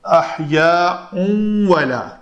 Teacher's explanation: بل احیاء، یہ تنوین ہے، تنوین کے بعد حروف یرملون میں سے واو آ رہا ہے، تو یا کا اس تنوین کا واو میں ادغام ہوگا، تو احیاء ولا، تو یہاں پہ ایک شد آئے گی۔